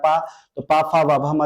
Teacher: पा फ व भ म जो उच्चारण करते हैं ओट से करते हैं